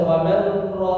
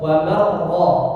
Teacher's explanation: Jadi tidak lagi dibaca waman ra, tapi langsung wamar ra, seperti huruf ra yang ditasydid. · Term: idgham kamil